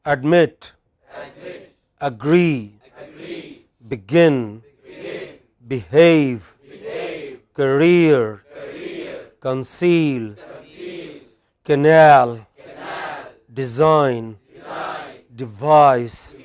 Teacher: words with main stress on the final syllable